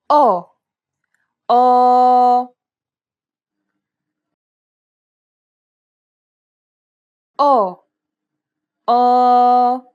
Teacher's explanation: The sound is similar to the O sound in the word pot, though try to open and round your mouth more than you would normally.